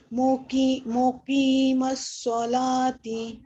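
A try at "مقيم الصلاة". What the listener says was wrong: ہاں تی کو لمبا نہیں کرنا، مقیم الصلاۃ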